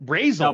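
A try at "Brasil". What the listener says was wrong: No, Brazil. They don't pronounce the Z. No, Brazil is like Canadian.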